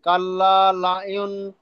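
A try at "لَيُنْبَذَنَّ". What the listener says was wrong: লা ইউন নয়, নুন পড়বেন না, মিম পড়েন, লা ইউম।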